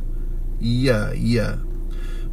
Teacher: pertengahan lidah bersentuhan lelangi di atas